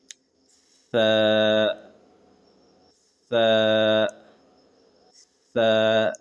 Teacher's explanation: जबान का जो नोक है उसको ऊपर के दांतों के सामने वाले दांतों से लगाते हुए जबरदस्ती हवा निकालेंगे तो सा आदा हो जाएगा